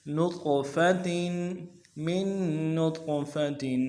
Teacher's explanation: تا کے تنوین میں غنہ کریں گے